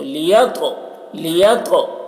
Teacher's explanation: دیکھیے تو میں قلقلہ کریں گے کیونکہ تو حروف قلقلہ میں سے ہے اور اس پہ جزم ہے